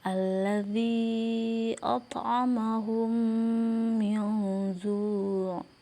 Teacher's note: Apabila ada mim sukun bertemu dengan huruf mim cara membacanya adalah memasukkan huruf mim ke dalam huruf Mim disertai dengan suara guna sekitar dua ketukan atau harakat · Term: idgam Mimi